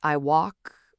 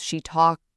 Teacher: They drop the end of words. Like, I walked becomes I walk, or she talked becomes she talk. The final consonant just disappears.